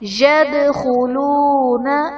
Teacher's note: دال حرف قلقلہ ساکن ہے، یہاں پر قلقلہ خوب ظاہر کریں گے